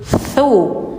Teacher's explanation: lidahnya ditempel gigi atas kayak digigit